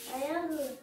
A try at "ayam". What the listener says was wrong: Itu mingkem. Coba, tetap mangap. Ayang jadinya kah? Ayang. Ayam gitu, tapi jangan mingkem. Ayang.